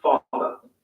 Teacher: Notice that the final R sound is not pronounced in British English. Father ends in a simple schwa vowel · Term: non-rhodic